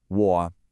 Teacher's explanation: Now technically, the third tone falls and then rises, but you'll almost never hear it pronounced that way in a full sentence. Usually you'll hear what's called a half-third tone, which is just a low, dipping sound that doesn't rise back up.